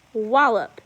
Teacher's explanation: you can see we punch it on the first, wallop